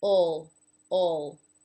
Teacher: the tip of the tongue isn't touching anything. It does come up then to finish off the L sound by touching the roof of the mouth. Ol, ol. But I also want to point out that it is acceptable, many people actually do pronounce this dark L without ever bringing the tip of the tongue up.